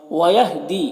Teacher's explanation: यहां पर या मद्दा है तो इसे एक अलिफ के बराबर खींचेंगे। · یہاں پر یا مدہ ہے تو اسے 1 الف کے برابر کھینچیں گے۔